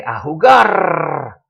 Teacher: when you start a soccer game, you know, the announcer may say, a jugar, and roll that R on the end